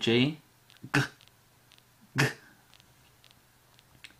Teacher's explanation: back of the throat again for the g